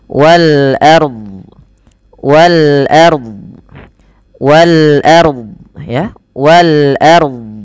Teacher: ro-nya dibaca dengan tebal karena ro sukun didahului dengan fathah.